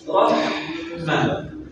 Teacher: biasanya orang seringkali menahan suaranya, nafasnya keluar tapi suaranya tertahan.